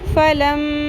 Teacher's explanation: فا زبر فا, لام زبر میم لم, فلم. میم مشدد ہے, میم کی آواز کو لمبا کرنا ہے, غنہ کرنا, ناک کی ہڈی میں آواز کو ٹھہرانا ہے.